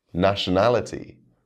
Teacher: we stress the third to last syllable